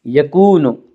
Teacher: یوم، یوم یکون الناس، یکون، واو مدہ، واو مدہ وہ واو جو ساکن ہو اور اس سے پہلے پیش ہو، واو مدہ کو ایک الف کے برابر کھینچ کر پڑھیں گے